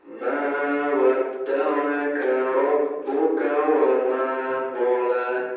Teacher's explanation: Ma di sini dibaca panjang, satu alif atau dua harokat. Kemudian wa ma qala, huruf ma ini dan huruf la ini dibaca panjang, satu alif atau dua harokat.